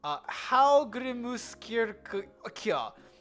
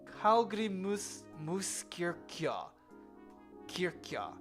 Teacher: The stress is on the second syllable, and the J is pronounced as a Y sound.